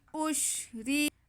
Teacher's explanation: جی، وَأُشْرِبُوا، واو پہ زبر، حمزہ پہ پیش اور شین ساکن، تو حمزہ کو ہم شین سے ملا لیں گے۔ وَأُش، آگے را کے نیچے زیر ہے تو را باریک پڑا جائے گا